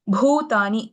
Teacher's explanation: Bhutani Bha is a Mahaprana.